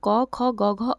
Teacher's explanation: ये गले से होकर निकलते हैं तो इनको बोलते हैं कंठस्थ